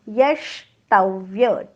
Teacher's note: यवर आघात, डोक्यावर हलंत पोटफोड्याश. पोटफोड्याश म्हणताना जीभ टाळ्याकडे जाते पण टाळ्याला चिकटत नाही